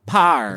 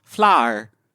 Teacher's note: people who speak posh tend to gloss over the W sound in certain words. To the average listener, it sounds as if a posh talker is not even pronouncing the W.